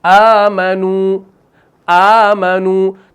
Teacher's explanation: तब्दील कहा जाता है हमजा को हरकत के मुताबिक हरफ मद से बदल देना